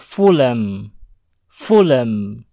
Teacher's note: Huruf H pada kata ini dihilangkan sehingga bunyi huruf L bersambung ke huruf M. Menjadi Fulham.